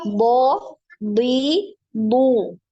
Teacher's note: huruf Dod ini walaupun kasrah dia tetap tebal jadi Kedengarannya itu seperti D Dwi gitu ya Dwi tapi bukan